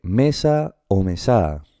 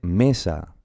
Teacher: el acento está en la penúltima sílaba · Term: palabra llana o grave